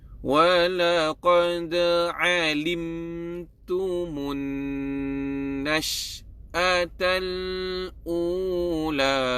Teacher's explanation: Ingat ya, apa-apa huruf yang bertanda sukun di atasnya, maka kena sebut huruf itu terang, jelas dan nyata. So mim mati bertemu dengan ta, maka sebutlah mim itu dengan terang, jelas dan nyata.